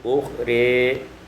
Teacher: ukhra imalatu fathatur ra, imalah fathah ra maka menjadi ukhri.